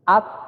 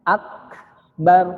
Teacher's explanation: Tapi kalau misalnya dalam posisi berharokat, maka dia tidak terlalu kentara, ya, sifat hamasnya huruf kaf ini. Huruf kaf ini hamasnya paling kuat ketika dia dalam posisi sukun.